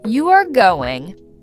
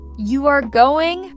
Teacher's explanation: if I say, You are going. flat, it sounds like a fact. But, if I say, You are going? rising, it becomes a question.